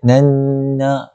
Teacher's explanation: Nun kedua tu, nun yang bertanda syaddah. Maka wajibul gunnah. Wajib kita dengung 2 harakat.